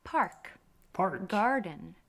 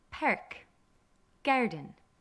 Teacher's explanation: Where the R sound has special emphasis in the back of the mouth and the throat. But in an Irish accent, it's as if we smile, making the vowel very broad as it comes forward to the front of the mouth. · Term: Irish R